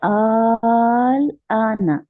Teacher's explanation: ठीक है, यह है आल आना, आ क्योंकि अलिफ मद्दा बन रहा है और उसके बाद लाम पे साकिन है, तो आ को हम 6 काउंट्स खींचेंगे और लाम पे जाके रुक जाएंगे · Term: कलमी मुखफ़फ़